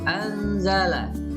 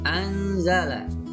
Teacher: Dibaca dengan samar-samar. Contoh, nun mati bertemu dengan zai. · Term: ikhfa